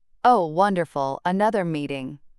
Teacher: Obvious sarcasm disguised as enthusiasm. The rising tone on wonderful followed by the flat delivery of another meeting creates perfect ironic contrast.